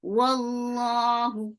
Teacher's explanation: Wallahu for waw circular lips, for fatha open your jaws, attached with lam, and lafz jalala will be heavy because you can see fatha before it. Wallahu, who is short, and circular lips for dhamma.